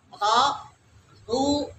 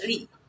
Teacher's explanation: Jika ada rok dipatah, di doma itu tebal ya, tafhim. Kalau di kasroh tarkik tipis ya.